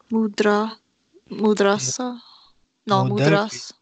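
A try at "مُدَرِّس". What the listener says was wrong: The vowel is under the shadda. Mudaris.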